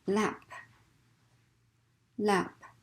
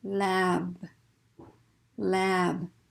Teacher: word final position here also has the same vowel ah but we're going to hold that vowel out a little bit longer because we're going to keep that voicing going through the vowel into the voice consonant so here we go lab lab so you as a non-native